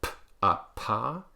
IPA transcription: p